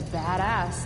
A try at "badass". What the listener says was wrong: Listen to the way she pronounces badass. Is it not meant to be badass? Badass, like the emphasis is on the bad bit. Badass. No badass.